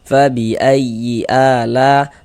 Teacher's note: Tapi dalam satu kata atau dalam satu kalimat maka dia berubah menjadi mad wajib muttasil. Panjangnya mad wajib muttasil itu dibaca dengan panjang 4 sampai dengan 5